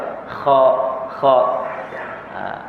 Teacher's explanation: huruf kha di hujung halkum. Jadi nak sebut huruf kha tu sekat dia tu.